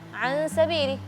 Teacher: sin kan tipis, jadi baca gunnahnya tipis